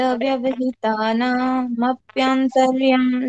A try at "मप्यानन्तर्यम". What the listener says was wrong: मप्यानन्तर्यम, मप्यांतर्यम नहीं। क्यों? क्योंकि मैंने इसमें एक न मिस कर दिया, तो आपने एक न मिस करके उसको मप्यानन्तर्यम बोलना है।